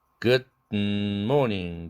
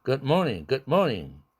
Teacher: 뒤에 morning 할 때 비음이 있으니까 앞에 드는 코로 개방돼야 되죠.